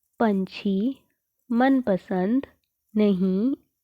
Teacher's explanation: बच्चों इन शब्दों का उच्चारण नाक से किया जाता है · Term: अनुस्वार